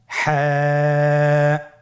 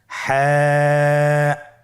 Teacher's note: হা হরফটি উচ্চারিত হবে কণ্ঠনালীর মধ্যখান হতে। গলা চিপে ধরে আপনি উচ্চারণ করুন।